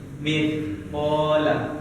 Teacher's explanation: ujung lidah bertemu dengan ujung gigi ini di atas kita. Tapi lidah kita sedikit keluar.